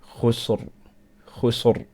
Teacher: This letter, if it is sakin, it has a sukoon on it, and the letter preceding that letter has a fatha or a dhamma on it, then you pronounce the ra strong with Tafkheem. So the word khusr, we got a ra sakin.